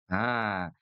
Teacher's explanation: Huruf H ada enggak nafas yang keluar? Ada ya. Karena dia punya sifat hames.